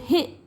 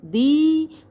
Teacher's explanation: जैसे अभी मैंने आपको हिंदी ही बोल के दिखाया तो हे जरा सी देर में हो जाता है, लेकिन दी वो थोड़ा हम खींचते हैं तो उसकी ड्यूरेशन ज़्यादा होती है, लेंथ ज़्यादा होती है। हे उसकी लेंथ कम है, दी उसकी लेंथ ज़्यादा है